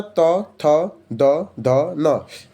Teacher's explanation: फिर आता है दंत व्यंजन, जो त वर्ग में आता है, त, थ, द, ध, न। दंत व्यंजन दांत से निकलता है